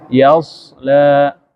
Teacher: Sad ini mahrojnya ujung lidah dengan gigi seri bawah.